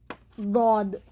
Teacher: زبان کا دائیں بائیں کنارہ اوپر کے داڑھوں سے لگا کر دود ادا ہوگا